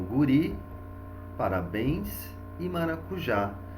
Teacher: na última sílaba, eu tenho guri, parabéns e maracujá. Já que é a última sílaba, todas essas três são oxítonas.